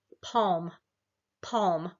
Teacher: you can feel the tongue comes down and low in your mouth, and the resonance is kind of back in the back of your mouth. It's hard to feel where the resonance is, but that's where it is. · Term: low back